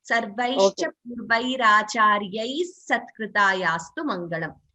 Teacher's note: That Visarga Sakara. So instead of the Visarga, we get extra S when we chant both the lines together